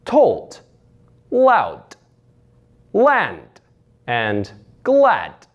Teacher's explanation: It's just a soft T sound at the end of the word for the D